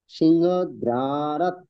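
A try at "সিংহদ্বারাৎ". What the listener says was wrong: না, দয় রফলা না, এটা দয় ব, অন্তস্থ ব, দ্বার। সিংহদ্বার। সিংহদ্বার।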